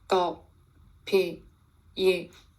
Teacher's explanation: Tone 1 is Pingshen, which is a low falling tone.